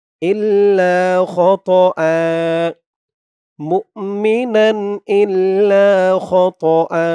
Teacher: মুমিনান ইল্লা খতআ, খতআ, এই জিম চিহ্নতে অক্ফ করার কারণে হামজার উপরে যে ২ জবর আছে, এই ২ জবর থেকে ১ জবর রিমুভ হয়ে যাবে। ১ জবর দিয়ে পাশে এই খালি আলিফ ধরে ১ আলিফ টান দিয়ে পড়তে হবে। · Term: এওয়াজ